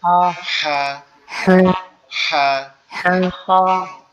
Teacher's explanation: একটু গলা চাপ হবে, চাপ হয়ে আওয়াজ হবে